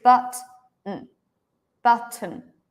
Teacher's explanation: actually we write it with a vowel but if you listen there is no vowel